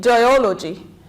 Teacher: we stress on the anti penultimate or the third from the end syllable